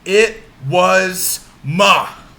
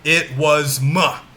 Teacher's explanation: we are placing the stress on ma the beginning of the word mini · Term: anapest